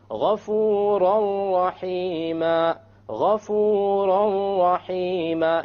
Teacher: You don't hear an N sound because you drop it. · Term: idgham without ghunna